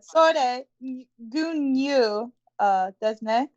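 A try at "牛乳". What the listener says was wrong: Yeah, try to get that gyu, the gya with the ya. Gyu. Gyunu. I was just trying to emphasize the Y sound. We want to get that Y sound. Gyunu.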